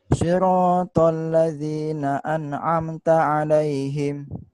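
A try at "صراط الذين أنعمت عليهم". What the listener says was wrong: Udah, tinggal ainnya dimantepin ya. Siratal ladzina an'amta 'alaihim. Siratal ladzina an'amta 'alaihim.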